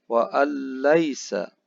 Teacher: Hukum bacaannya adalah idgham bila gunnah. Bunyi nun sukun dimasukkan ke dalam suara lam dan tidak boleh dibaca secara mendengung.